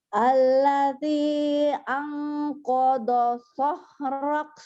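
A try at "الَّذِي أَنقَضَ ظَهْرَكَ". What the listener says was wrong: Lumayan, belum zahrak, zo-nya belum ya, yang keduanya. Harusnya gini, lihat ya. Alladzi anqadha zahrak. Qadha zahrak. Alladzi anqadha zahrak.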